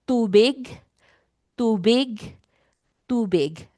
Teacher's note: Our T sound in Tagalog doesn't have an H sound like in English. It's not too big.